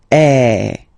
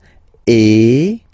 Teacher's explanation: the sound is really open, and normally your mouth should be opened a little bit more than with the accent aigu as well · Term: accent grave